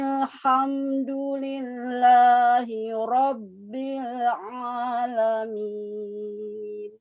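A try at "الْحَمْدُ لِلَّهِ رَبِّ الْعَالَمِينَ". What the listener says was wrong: Hanya dalnya sudah lebih bagus, masih kurang tepat sedikit lagi. Tapi itu sudah ada di pangkal lidah terdengarnya ya. Daripada yang awal. Untuk tafkhim ro-nya, semoga Allah memberikan kemudahan ya.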